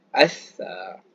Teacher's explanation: Jadi huruf sa ini, cara kita nak sebut dia, kita keluarkan sedikit hujung lidah, melepasi daripada gigi atas dan bawah lah. Macam nak digigit tapi tak digigit lah.